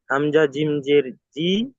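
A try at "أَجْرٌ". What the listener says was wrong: হামজা জিম যাবার, হামজা জিম জেন নেই, দেখেন কি আছে ওখানে। হামজা জিম যাবার, হামজা জিম যাবার যা, হামজা জিম যাবার আজ। র দু পেশ।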